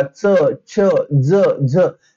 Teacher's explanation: जीभ जी आहे ती पुढच्या दात आणि जो टाळू आहे त्याच्या तिथं टच होते. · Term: तालव्य